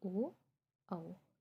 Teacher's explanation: कंठ और होठ दोनों से मिलकर जो उच्चारित होगा उसे कंठोष्ठ कहते हैं,